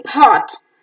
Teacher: Oh, as in pot, is back, open, rounded, short vowel